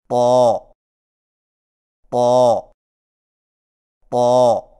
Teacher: طا کی ادائیگی میں زبان کی نوک کو ثنایا علیہ کی جڑ سے لگا کر اور زبان کے پچھلے حصے کو تالو کی طرف بلند کرتے ہوئے موٹی آواز میں پڑھیں، یعنی طا طا طا۔